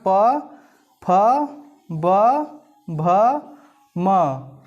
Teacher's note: तो आप देखेंगे कि हमारे दोनों ओठ आपस में टकरा रहे हैं